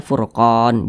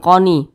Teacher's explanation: Nah, ini kan kita berwakaf nih atau berhenti tepat di huruf nun. Huruf nun tidak dibaca panjang, makanya kita sukunkan atau kita matikan. Nah, sehingga kita baca wal furqan, seperti itu.